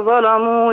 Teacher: وخلي بالنا من اللام في قوله ظلموا ترقق